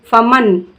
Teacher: अब देखिए फमन में नून की आवाज़ को हम ज़ाहिर करके पढ़ रहे हैं और नाक में बग़ैर रोके आवाज़ को पढ़ रहे हैं, फमन, क्योंकि आइन पे, आइन क्या है, हरूफ़े हल्की में से है।